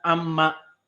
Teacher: Amma asalnya an dengan ma, maka nun sakinah bertemu dengan mim jadi idgham, ditasdidkan amma